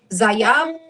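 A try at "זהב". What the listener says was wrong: So the second letter here, I'll go back to it. This second letter would be a ha.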